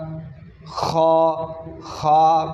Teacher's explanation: اس کی نکلنے والی کی جگہ جو ہے وہ ہے حلق کے اوپر حصے والی جگہ